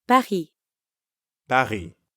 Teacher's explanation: Notice how the S at the end of Paris is silent again?